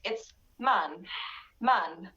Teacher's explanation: it's very short. You cannot make it long like man in American accent.